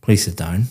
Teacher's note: very flat intonation going down